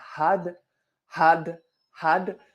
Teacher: le bout de la langue touche juste l'arrière des dents